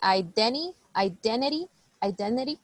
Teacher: like there's no T so we just say identity